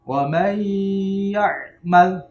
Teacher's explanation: dia nunya langsung masuk ke huruf ke ya. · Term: idgham bi gunnah